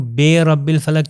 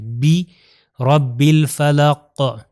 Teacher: عربی میں ہم نے کیا کہا، کسرہ یعنی زیر کا تلفظ ای ہے